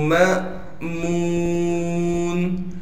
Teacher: حمزہ ساکن کو جھٹکا دے کر پڑھا جاتا ہے